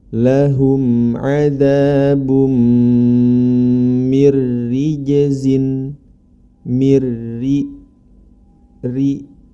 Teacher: huruf ro berharakat kasrah maka dia dibaca tipis